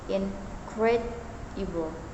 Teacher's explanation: In the word incredible, for example, the primary stress falls on the second syllable